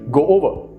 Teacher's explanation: one sound where you're not pronouncing the o's separately but as one unit